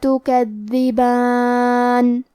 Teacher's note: دال کے ادائیگی زبان کے سر اور اوپر والے دانتوں کے اندرونی کناروں سے ہے، اور کیونکہ اس پہ تشدید ہے تو ہمیں دو حرف کے برابر دال کو پڑھنا ہے.